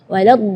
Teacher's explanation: huruf dhad itu keluarnya dari pinggir lidah maupun yang kanan ataupun yang kiri atau dua-duanya